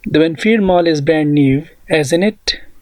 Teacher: जब आपको पता होगा कि मेरा जो स्टेटमेंट है ये ठीक है, तो हम फॉलिंग इंटोनेशन इस्तेमाल करेंगे, यानी आवाज़ को डाउन करेंगे।